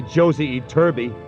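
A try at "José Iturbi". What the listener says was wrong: It's not Josie, it's Jose. In Spanish, J is pronounced like H.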